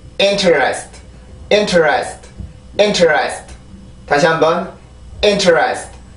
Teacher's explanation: 이렇게 큰 리듬 하나, 작은 거 2개. 똑같은 리듬이죠. 똑같은 리듬이 조금 길게 됐는데 똑같은 리듬이 이렇게 2개가 생겨나게 됩니다.